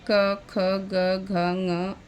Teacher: कंठ से क, ख, ग, घ, ङ, अ, ह और अह का उच्चारण होता है।